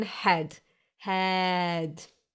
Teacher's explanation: It gets pronounced as A. So basically like a long, loose, relaxed and chilled out E. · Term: A mit Umlaut